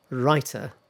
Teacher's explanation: T in writer is voiced, sort of like voiced. It sounds a bit like rider.